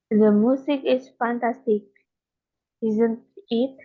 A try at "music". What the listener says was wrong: jadi bukan musik tapi music karena u-nya kan dibaca u.